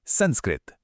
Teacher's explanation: नियम के हिसाब से तो कुछ और होना चाहिए था, पर यहां सम और कृत के बीच एक आधे स की एंट्री हो जाती है।